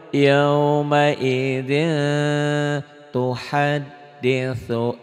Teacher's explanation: Ini tetap ya ikhfa tapi n-nya jadi eng